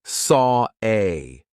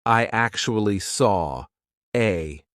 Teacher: the intrusive R is when we insert an R to link to the next word. Even though there's not an R written there, we just put one in.